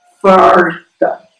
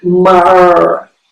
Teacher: em ambos os casos, no dialeto caipira, as pessoas vão dizer mar, com um retroflexo